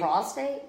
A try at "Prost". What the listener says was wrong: Prost. You have to roll the tongue. Prost. Not your prostate. Prost.